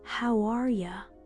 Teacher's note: instead of hearing How are you? as 3 words, your brain should hear it as one sound. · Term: chunking